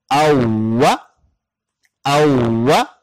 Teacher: वाव पर शद आ जाए तो वाव की आवाज दो दफा पड़ जाएगी यानी रिपीट होकर जाएगी